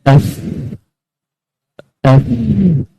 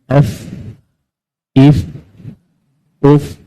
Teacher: Fa di bibir, yang mana gigi atas, sepanjang gigi atas menahan ataupun menyentuh bibir bawah. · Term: makhraj fa